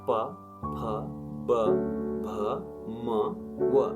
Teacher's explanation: दुवै ओठको संलग्नताबाट उच्चारित हुने वा ओठ जोडिएर उच्चारण हुने वर्णहरू वष्ट्य वर्णहरू हुन्।